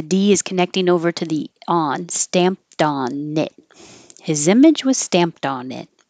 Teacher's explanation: His image was stamped on. So the D is connecting over to the on, stamped on it.